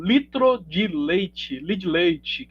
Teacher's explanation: quando temos duas duas consoantes duas sílabas parecidas a gente acaba eh eliminando uma dessas